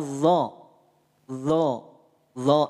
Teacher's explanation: Arahkan ujung lidah kita pada ujung gigi seri atas sambil dinaikkan pangkal lidahnya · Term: huruf d